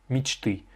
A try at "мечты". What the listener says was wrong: L'accentuation est sur le U.